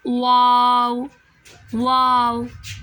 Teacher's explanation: हम जब तक होंठों को गोल नहीं करेंगे हमारी वाव अदा नहीं होगी। होंठों को गोल करने से वाव अदा होती है। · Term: होंठों की गोलाई